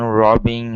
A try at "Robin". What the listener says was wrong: Give me a short I here instead of robbing. Okay, it's Robin.